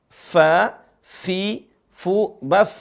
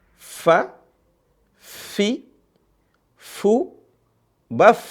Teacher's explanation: Gigi serinya atas itu bertemu dengan bibir bawah. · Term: huruf fa